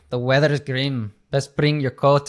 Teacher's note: you're implementing that r that very specific yeah tapped R